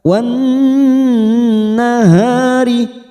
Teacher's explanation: Wan masuk pada huruf nun yang bertasdid, wan kita tekan selama 3 harokat.